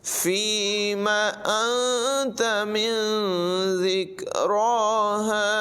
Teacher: زال میں سیٹی کی آواز نہیں نکالیں گے، را کو پر ادا کریں گے